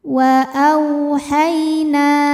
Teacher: ada harfulin sebab ada ya sukun yang didahului baris fathah maka kita baca lembut atau lunak